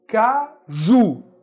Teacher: Qual é a sílaba tônica? Ju. Caju. Ju é mais forte.